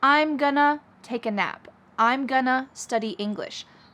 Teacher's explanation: linking together going to which often becomes gonna